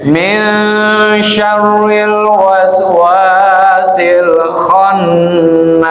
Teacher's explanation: nun mati ketemu syin ikhfa ya, jadi jangan min jangan ming, ya, tapi min min, ya.